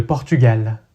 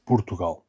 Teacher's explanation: the first vowel is reduced to u.